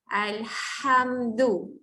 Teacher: Kalau atas ha tekan di tengah-tengah kerongkong.